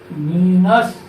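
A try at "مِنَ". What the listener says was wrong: মিনাস কেমন হলো? এটা হলো জ। এটা ত, তো আর উপর এটা হলো জ। এটা জ হয়ে যায় হোক, এটা বলো।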